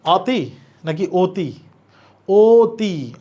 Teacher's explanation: অ এর উচ্চারণ ও এর মত হচ্ছে মুখ ছোট হয়ে যাওয়া তাহলে এটা সংবৃত